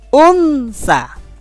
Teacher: Bunyi nonnya un ketemu huruf ikhfa sa. Maka disamarkan. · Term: hukum bacaan ikhfa